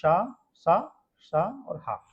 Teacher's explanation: वे व्यंजन जिनके उच्चारण में हवा संघर्ष के कारण ऊष्म होकर बाहर निकलती है। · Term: ऊष्म व्यंजन